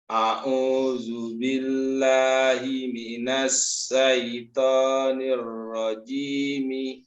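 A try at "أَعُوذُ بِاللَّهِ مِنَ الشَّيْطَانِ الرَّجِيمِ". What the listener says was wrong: Ya, tinggal sya-nya Pak. Tebalkan lagi dia apa namanya? Perbanyak lagi anginnya di sini. A'udzu billahi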